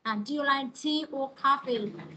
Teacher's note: Thì chữ tea cô sẽ lên giọng ha, và chữ coffee sẽ xuống. · Thường là câu hỏi liên quan tới lựa chọn hoặc là câu liệt kê các bạn ha. Câu liệt kê ra thì nó sẽ là liên quan tới ngữ điệu là lên rồi xuống.